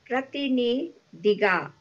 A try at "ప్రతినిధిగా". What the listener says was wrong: అవునండి.